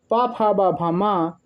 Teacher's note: आप जब पा बोलेंगे तो दोनों ओठ मिलेंगे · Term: ओष्ठ